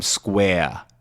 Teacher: the Boston accent is non rhotic Typically